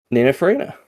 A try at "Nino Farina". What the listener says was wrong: I didn't hear the N. It just sounded like you said Nino Farina.